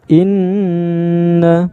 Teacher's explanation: Mana ini ya, huruf nun ditasydid, nun ditasydid, ini kan tasydid itu kayak huruf waw, huruf w ini ya, tasydid namanya. Ketika dibaca huruf nunnya harus didengungkan antara 2 sampai 3 harokat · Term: gunnah